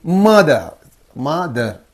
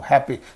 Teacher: stress is usually on the first syllable so of the two syllables the first syllable receives the stress